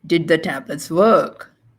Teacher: We're going into a polar question, so it's rising.